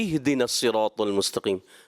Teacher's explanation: یہ اہدے نہیں کرنا، تھوڑا محسوس ہو رہا ہے کہ آپ مجہول کی طرف جا رہے ہیں، اس کو معروف رکھنا ہے